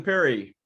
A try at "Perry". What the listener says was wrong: It's a long E sound. There's 2 E's instead of 2 R's like Perry. It's Peary.